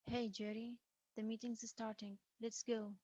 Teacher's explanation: it's mostly falling intonation like a statement i expect a response and i need one now · Again, it's a first name basis, but this sounds more commanding. It's mostly fallen intonation like a statement.